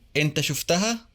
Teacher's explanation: Notice the a vowel that's inserted after the first 2 consonants and before the third one. It matches the vowel in the suffix.